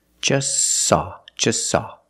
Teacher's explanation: the t is between consonants so don't pronounce it it's silent just saw you link the S with the S link them · is between consonants so don't pronounce it it's silent just saw you link the S with the S link them together